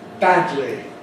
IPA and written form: ˈbædli (badly)